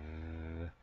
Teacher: when we go v, that's when we can start to feel vibrations